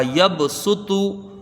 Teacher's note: یا کو با سے ملا کے جلدی پڑھیں گے، با میں قلقلہ ہوگا، سین کے اوپر پیش ہے، اس کو جلدی پڑھا جائے گا.